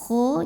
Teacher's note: Kho, pangkal lidah naikkan, keluarnya dari tenggorokan paling atas. Kho, jangan terlalu ngorok kho, begitu enggak juga ya.